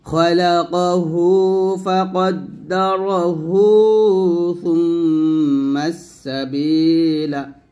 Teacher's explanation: এই যে ফাকদ্দারাহু, হুতে আমরা 1 আলিফ টান দেব।